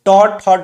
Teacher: ट ठ ड ये सभी मूर्धा वाले वर्ण है, मूर्धा से उच्चारित होते हैं